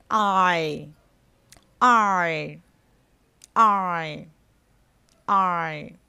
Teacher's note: Khi phát âm nguyên âm đôi I thì âm này bắt đầu bằng một nguyên âm A ở giữa lưỡi. Và đến chữ Y thì lưỡi sẽ hơi nâng một chút. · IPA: /ai/